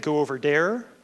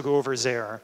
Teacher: If you're a Quebec French speaker, it usually turns to a D, so you'll get go over dare.